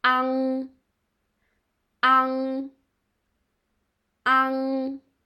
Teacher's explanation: when we say ang, the root of our tongue touch the upper part.